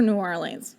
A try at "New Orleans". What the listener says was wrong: It's New Orleans. It blends. That makes it sound like a used card salesman. No, it's just New Orleans. There's no leans. You don't lean into it. It's just New Orleans. Yes, you do, and it's wrong.